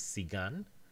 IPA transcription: sigan